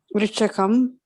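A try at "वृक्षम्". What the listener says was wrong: Vriksha. It's not vrikshaka, right? It's vriksha. So vriksham.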